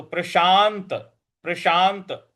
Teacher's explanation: प्रशांत, शा के बाद जो आधा न है उस पर हमको बल लगाना है। तो प्रशांत, प्रशांत मनसम, जो स के ऊपर अनुस्वार है उसके आगे ह लिखा हुआ है तो यहां उच्चारण इसका म होगा।